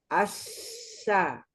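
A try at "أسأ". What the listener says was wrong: Hati-hati masih cenderung ke sin. Bukan assa, tapi asya. Jadi udaranya benar-benar full ya. terdorong dengan maksimal.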